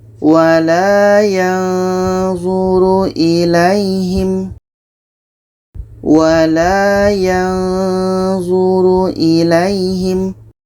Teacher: dengung lebih kurang 2 harakat. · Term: ikhfa hakiki